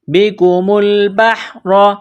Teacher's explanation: را زبر را بحر، با کو حا کے ساتھ ملائیں گے، را کے اوپر زبر ہے، را کو موٹا کرنا ہے